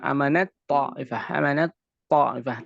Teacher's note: nahdzif atau dihilangkan tak ketika masuk ke dalam ta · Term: idgham kamil